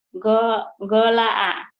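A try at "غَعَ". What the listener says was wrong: ini A, Bu, bukan la. A.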